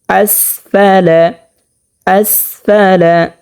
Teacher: আসফালা হামসাকে স্পষ্টভাবে 1 নম্বর মাখরাজ হতে উচ্চারণ করতে হবে, হলকের শুরু হতে।